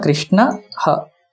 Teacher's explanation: It's not akara, it's a ha. It's a mahaprana sound, slight of mahaprana sound.